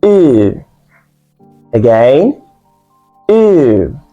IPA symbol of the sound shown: u: